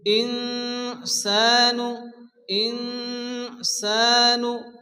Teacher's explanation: সিন আসছে, এক আলিফ গুণনা হবে, সা আলিফ মাদ্দা এক আলিফ টেনে পড়তে হবে। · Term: ইকফা